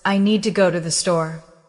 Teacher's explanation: In the sentence, I need to go to the store, the important words are need, go, and store. The rest are said more softly. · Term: stress pattern